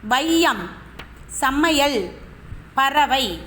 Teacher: இடையிலும் பறவை வை சொல்லுக்கு இறுதியிலும் இவ்வு கூட்டல் ஐ இந்த ஐகாரமானது வருகிறது ஐகாரம் சொல்லுக்கு முதலில் வரும்போது ஒன்றரை மாத்திரை அளவில் ஒலிக்கிறது அதே ஐகாரம் சொல்லுக்கு இடையிலும் இறுதியிலும் வரும்பொழுது ஒரு மாத்திரை அளவில் ஒலிக்கிறது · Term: ஐகாரக் குறுக்கம்